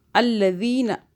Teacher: الذین، یہ جو ذال آ رہا ہے نا اس کو سافٹ پڑھنا ہے، زبان کو ہلکا سا باہر کریں پھر یہ ادا ہوگا یہ والا ذال. ٹھیک ہے، سیٹی کے آواز میں.